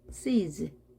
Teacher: 영어에서 모든 모음은 유성음입니다. 떨림이 있습니다. 따라서 z 발음합니다.